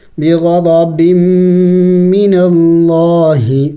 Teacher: لفظ اللہ سے پہلے زبر ہے تو لفظ اللہ کو موٹا پڑا جائے گا